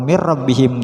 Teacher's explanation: ketika Nun dilafazkan sudah siap melafazkan ro namun tanpa dengung